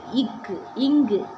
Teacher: நாவின் முதற் பகுதி அண்ணத்தின் அடிப்பகுதியை பொருந்துறதுனால பிறக்குது